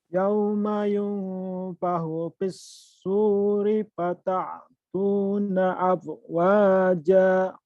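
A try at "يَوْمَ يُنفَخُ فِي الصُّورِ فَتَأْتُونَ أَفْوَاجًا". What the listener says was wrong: Fatanya jangan ke ain, fata. bukan pahu. Pahu, kho kan? Kalau pahu itu ha.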